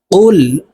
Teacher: কফের উচ্চারণ জিহ্বার গোড়া থেকে উচ্চারণ করতে হবে